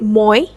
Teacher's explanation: the sound starts with a more open o and Glides towards a closed e sound